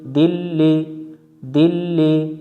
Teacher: কি করতে হবে আরকাতের সাথে তাসদিদ অক্ষর মিলিয়ে দিতে হবে হবে আর তাশদি অক্ষর উচ্চারণ করতে হবে দুইবার